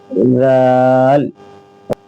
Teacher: زبان کی نوک، اوپر کے جو دو دانت ہیں ثنایا علیہ کا کنارہ